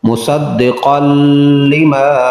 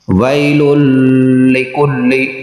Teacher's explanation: نون تنوین کے بعد لام حروف یرملون ہے تو ادغام بغیر غنہ کے